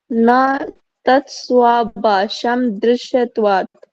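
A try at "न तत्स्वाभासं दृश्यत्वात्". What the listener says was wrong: बा नहीं है ये भा है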